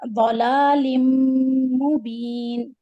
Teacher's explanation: لام الف صغیرہ لا دو حرکت لام کسرتین میم سکون لم ادغام کریں گے کیونکہ تنوین کے بعد میم آ رہا ہے